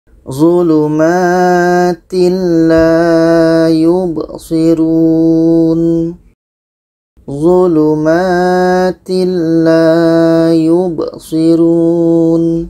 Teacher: Lam bermakna adalah tidak dengung. Tanwin bertemu lam tidak dengung.